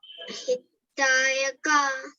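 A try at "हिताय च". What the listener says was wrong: Dayacha. Cha. It's not ka, it's cha. Cha.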